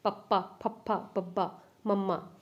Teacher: ਆਪਣੇ ਦੋਨੇ ਬੁੱਲਾਂ ਦੇ ਉਚਾਰਨ ਨਾਲ ਜਿਹੜੀ ਕਿ ਧੁਨੀਆਂ ਪੈਦਾ ਹੁੰਦੀਆਂ ਨੇ ਹਵਾ ਨੂੰ ਰੋਕ ਕੇ, ਉਹਨੂੰ ਕਹਿੰਦੇ ਨੇ ਹੋਠੀ। ਜਿਵੇਂ ਤੁਸੀਂ ਬੋਲ ਕੇ ਦੇਖੋ, ਆਪਣੇ ਦੋਨੇ ਹੋਠ ਆ ਜਿਹੜੇ ਕਿ ਇੱਕੋ ਦਮ ਮਿਚ ਕੇ ਆਪਣੇ ਸ਼ਬਦਾਂ ਨੂੰ ਛੱਡਦੇ ਨੇ। · ਜਿਵੇਂ ਤੁਸੀਂ ਬੋਲ ਕੇ ਦੇਖੋ, ਆਪਣੇ ਦੋਨੇ ਹੋਠ ਆ ਜਿਹੜੇ ਕਿ ਇੱਕੋ ਦਮ ਮਿਚ ਕੇ ਆਪਣੇ ਸ਼ਬਦਾਂ ਨੂੰ ਛੱਡਦੇ ਨੇ। ਪੱਪਾ ਦੇਖੋ, ਜੇ ਤੁਸੀਂ ਪੱਪਾ ਬੋਲਿਆ ਤਾਂ ਤੁਹਾਡੇ ਜਿਹੜੇ ਕਿ ਬੁੱਲ ਉੱਪਰਲਾ ਨਿਚਲਾ ਆਪਸ 'ਚ ਟੱਚ ਹੋਏ, ਠੀਕ ਹੈ, ਫਿਰ ਤੁਸੀਂ ਮਤਲਬ ਕਿ ਮੂੰਹ ਖੋਲ੍ਹਿਆ ਤਾਂ ਉਸ ਸਮੇਂ ਧੁਨੀ ਪੈਦਾ ਹੁੰਦੀ ਹੈ ਜਿਹੜੀ ਕਿ ਉਹ ਹੁੰਦੇ ਨੇ ਹੋਠੀ।